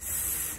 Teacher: 그 다음에 스 하면 이 혀끝과 윗니 사이로 이렇게 바람이 나가서 스 소리가 납니다